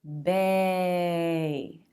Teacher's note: say or a instead both of those are vowel sounds but we need a diphthong a changing sound with two positions